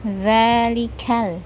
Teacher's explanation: Zalikal, za panjangnya 2 harokat saja, bunyinya dari ujung lidah bertemu 2 ujung gigi seri atas, satu makhraj dengan huruf sa · Zal mempunyai sifat jahar jelas, tanpa angin yang keluar dari mulut. Kemudian dibacanya lemah dengan tidak menekan saat mengucapkannya.